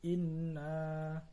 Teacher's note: inna itu adalah gunnah musyaddadah karena ada huruf nun yang bertasdid. Cara membacanya masuk dengan mendengung